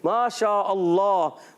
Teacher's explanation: अल्लाह के लाम को, इसमें जलाल के लाम को पुर भी करते हैं